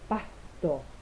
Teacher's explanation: Y los sonidos laringios se producen por el contacto entre los pliegues vocales y la glotis, como el sonido aspirado de la S en pasto